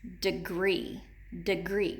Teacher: the long e is accented in the second syllable in the word degree